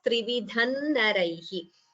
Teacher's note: So Anuswara followed by Na. You could combine and chant it as Trividhan Naraihi.